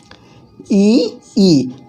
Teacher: ई का उच्चारण स्थान तालु से है।